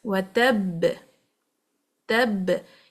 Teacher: You can hear the sound of the qalqalah very clear and strong. It means that we are not reading anything after it straight away. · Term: greater qalqalah